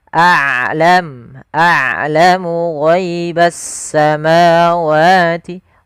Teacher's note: Rokhawah yaitu sifat yang dimana dia harus dialirkan suaranya, sedangkan syiddah adalah suaranya tertahan. Nah, ain tidak terlalu ditahan dan tidak terlalu dialirkan, maka tengah-tengah. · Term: sifat bainiyah